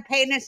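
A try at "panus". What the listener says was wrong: Oh, panis. You're saying penis. Yeah, yeah. It sounds like you're saying penis.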